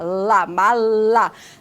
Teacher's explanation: Lá, quase um pouquinho atrás dos dentes. E daí, como a língua ela faz esse movimento, o ar passa por onde? Pela lateral dessa língua. Por isso que são consoantes laterais.